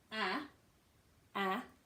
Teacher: the vowel sounds at the back but open